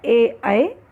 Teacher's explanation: कंठ तालव्य से उच्चारण स्थान है कंठ और तालु और वर्ण है ए, ऐ।